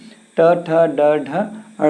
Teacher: आपकी जिह्वा मुड़ करके और एकदम ऊपर की ओर पीछे की तरफ स्पर्श कर रही है। आगे हमारा तालु है, दांत के बाद से ऊपर तालु हो जाता है, लेकिन दांत के थोड़ा सा पीछे, जब तालु के पीछे जाएंगे तो वहाँ मूर्धा मिलता है।